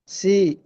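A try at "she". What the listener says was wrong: இந்த சி சி அல்ல ஷீ அது தடிப்பை சொல்லி போறாங்க தடிப்பமாவே சொல்லி போறாங்க அப்பதான் உங்களுக்கு பின்னுக்கு லேஸ் ஆகும் she S H sound she she அந்த ஷீ வரணும் ஆ போதாது போதாது தடிப்பம் வரல தடிப்பம் தடிப்பம் போதாது தடிப்பம் போதாது எஸ் ஷீ தான் ஷீ தடிப்பம் போதாது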